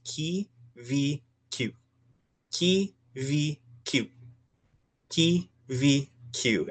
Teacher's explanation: I kind of blend the very ending. It's an I and a U, so it goes ew.